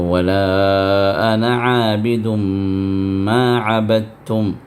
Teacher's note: اور عبدتم کے اندر جو دال ہے وہ دال جو ہے تا کے اندر ہم نے ضم کر کے دال کا جو ساؤنڈ ہے اس کے بغیر ہم نے وہاں پر صرف تا کو ادا کیا ہے